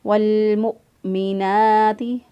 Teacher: نون کھڑی زبر نا، ایک الف کے برابر اس کو لمبا کیا۔ والمؤمنات، ثم، سا جو ہے اس کی ادائیگی میں سیٹی جیسی آواز نہیں آنی چاہیے، سا کو نرمی سے ادا کریں گے۔ · والمؤمنات، واو ساکن، حمزہ ساکن ہے، اس کو جھٹکا دے کے پڑھیں گے، جب حمزہ سکون کی حالت میں ہو تو اس وقت اس کو جھٹکا دے کے پڑھتے ہیں۔ والمؤمنات، نون کھڑی زبر نا، ایک الف کے برابر اس کو لمبا کیا۔